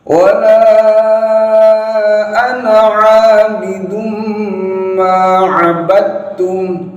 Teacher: Wala ana 'abidum ma 'abadtum. Ini langsung dimasukkan ke huruf ta tanpa dipantulkan dalnya